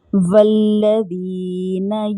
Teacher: वाव को लाम के साथ मिलाकर पढ़ेंगे क्योंकि लाम मुशद्दद थे